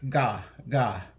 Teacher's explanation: And velar is the place in the roof of your mouth that's not quite where the teeth are, but it's just starting to head towards the back of your throat and nasal cavity. And ga is the G sound, but it's made with the back part, so it's called a back velar. So it's a little bit like a little bit more of a cough.